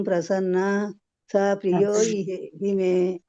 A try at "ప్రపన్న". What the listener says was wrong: అందరు ప్రసన్న అని చదువుతున్నారు.